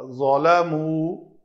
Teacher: لِأَلَّا يَكُونَ لِلنَّاسِ عَلَيْكُمْ حُجَّةٌ إِلَّا الَّذِينَ ظَلَمُوا منہم، نون کے بعد ہا حرف ہلکی ہے تو یہ نون کا اظہار ہوگا۔ ظلموا، ظا اس کو پر پڑھیں گے، اگر پتلا کریں گے تو یہ زال بن جائے گا